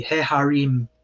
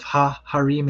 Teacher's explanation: sometimes the definite article will be vocalized with a segol, so a he instead of a ha